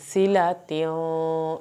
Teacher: اور فی یا ساکن کی وجہ سے اس کو کھینچ، سلاتیوں یہاں پہ سین سیٹی کی آواز کے ساتھ پڑھا جائے گا